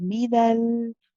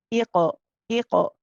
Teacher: So you know how he's talked about the back of the tongue going to the soft palate and your back of the tongue bounces off. So you hit the makhraj, the soft palate at the back, and then you bounce off. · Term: qalqala